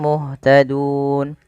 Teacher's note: Kemudian pada fal dun ada bacaan mad arid lukun yang di mana kita boleh memilih untuk memanjangkan lafal dun dengan mematikan nunnya.